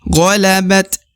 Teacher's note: dibaca sambil disukunkan atau dimatikan dengan mengeluarkan sedikit hembusan ya, mengeluarkan sedikit hembusan dari lisan.